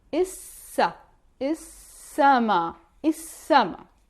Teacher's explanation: The sky is sama. Notice how we don't pronounce the lam, we say I, only I, and after we pronounce the S 2 times